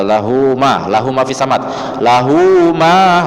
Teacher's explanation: lahunya cuman 2 harokat karena dia setelahnya di huruf Ma huruf Ma maka dia dibaca mad shilah qasirah saja pendek dua